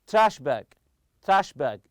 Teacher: you put the stress on the first part